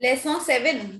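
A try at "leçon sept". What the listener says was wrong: P is silent. Make P silent.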